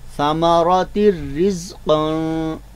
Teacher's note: गुन्ना के साथ इदगाम करते हैं, गुन्ना के बगैर इदगाम करते हैं, तो यहाँ पे गुन्ना नहीं होगा, लिहाजा तिर रिज़्क़न। ठीक है, तो तनवीन का जो नून है वो पूरी तरह रा में मिल जाएगा, इदगाम हो जाएगा